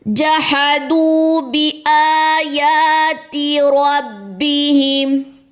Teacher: جہا دونوں حرکات ہیں، لمبا نہیں کریں گے، دو واو مدہ 2 کاؤنٹس لمبا کریں گے، باقی زیر لمبی نہیں ہوگی، یہاں پہ کھڑا زبر یا الف مد یہ بھی 2 کاؤنٹس لمبا، کھڑا زبر یا الف مد یہ بھی 2 کاؤنٹس جو ہے یہ لمبا ہوگا، تا کی زیر بھی لمبی نہیں کرنی۔